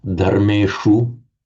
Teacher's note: That is the retroflex sh sound, because in Sanskrit it's dharmeshu